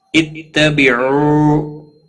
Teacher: اتبعوا واو مدہ ہے، ایک الف کے برابر کھینچ کر پڑھیں گے